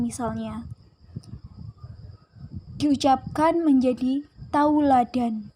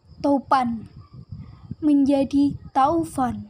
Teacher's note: Topan menjadi taufan, vokal O menjadi AU. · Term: Diftongisasi